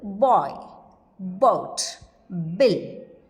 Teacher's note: B is partially devoiced when it occurs initially.